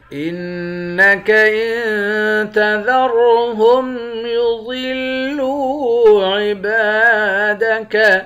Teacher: انک ان تذرهم يضلوا عبادك، حمزے کو نون مشدد کے ساتھ ملا کر یہاں غنہ کریں گے، یہاں پر نون پر اخفا کریں گے، اور را کو موٹا پڑھیں گے، ضاد کو بھی موٹا پڑھیں گے۔ لام کو واو کے ساتھ ملا کر واو کو ایک الف کے مقدار کھینچ کر پڑھیں گے، واو حروف مدہ ہے۔